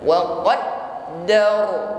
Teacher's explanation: huruf dal tasydid ditekan membacanya, sehingga muncul sifat syiddah di sini